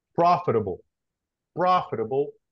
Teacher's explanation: the stress is in the beginning uh syllable